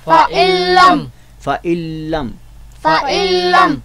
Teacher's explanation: गुन्ना नहीं होगा यहाँ पे, गुन्ना के बग़ैर इदगाम होगा